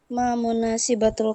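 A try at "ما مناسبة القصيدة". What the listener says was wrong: Munasabah, bukan munasibah. Munasabatul qasidah.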